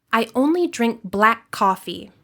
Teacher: you only pronounce the consonant sound once, and you hold that sound a little longer. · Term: consonant to consonant linking